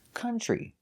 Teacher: Now we have the TR making the sound ch, like in chicken. So it's tree, country.